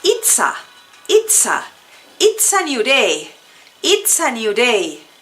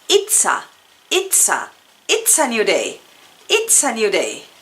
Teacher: Lo interesante aquí es que no estamos separando it's a, sino lo estamos juntando y haciendo una sola palabra.